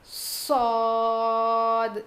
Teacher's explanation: سین کے جیسا نہیں, الگ ہے, اس کو تھوڑا موٹا پڑھیں گے